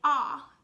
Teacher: the sound is open and it's voiced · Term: short vowel